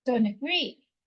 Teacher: The A again is a schwa sound, so don't agree.